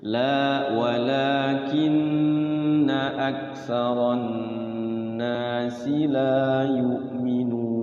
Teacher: Awas, la-nya panjang 2 harokat.